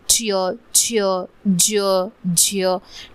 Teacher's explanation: य लावून जेव्हा उच्चारतो तो तालव्य उच्चार असतो, आणि जेव्हा अ लावून उच्चार असतो तो दंततालव्य उच्चार असतो.